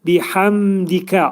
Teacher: mim hərfi izhar olur. Biəmdikə ağız yumulur. Mim hərfinin məxrəci nə olur?